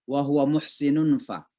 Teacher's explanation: Jadi seolah-olah suara nun itu masuk ke huruf fa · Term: ikhfa